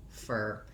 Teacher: i have my clear stressed er vowel there my dark uh my back american er sound and instead of